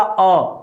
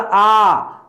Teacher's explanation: आपने बोला अ तो कम समय लगा, आपने बोला आ तो अ की अपेक्षा आ में 2 गुना समय लगता है